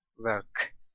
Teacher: when we say work there's a light release at the end of work